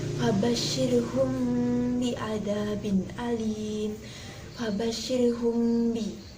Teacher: harus disamarkan huruf mim sukunnya ke dalam huruf ba tanpa adanya penekanan dan dengung selama 2-3 harokat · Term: ikhfa syafawi